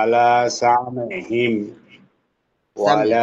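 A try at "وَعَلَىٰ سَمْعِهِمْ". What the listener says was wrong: সামিইহিম, ওয়ালা না। মনে হচ্ছে যেন ওয়ালা হয়ে যাচ্ছে বিষয়টা, ঠিক আছে? ওয়ালা, ওয়ালা, সামিইহিম।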